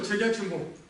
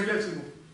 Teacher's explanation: Например, есть такое слово чагячимбо. Чагячимбо на восточном диалекте в Каме будет читаться как цагячимбо.